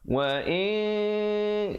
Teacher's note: yang dimasukkan dengan ikhfa ialah menyembunyikan bunyi nun matinya di belakang kaf